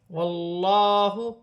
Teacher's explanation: اللہ کی لام سے پہلے زبر ہے تو اللہ کی لام موٹی پڑی جائے گی